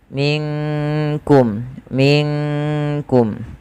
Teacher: maka di situ nunnya disamarkan langsung kepada huruf Kaf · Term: Ikhfa abad